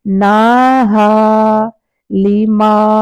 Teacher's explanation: دونوں سیم الف مدہ ہے، دونوں کو 100% سیم ٹائم دیں گے